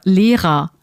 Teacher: we don't really pronounce the R at the end of a word like teacher